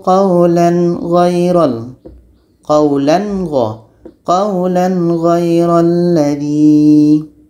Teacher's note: Tanwin bertemu ghain: qulan ghai...tanwin harus jernih, ghain juga harus jernih, dan tidak ada dengungan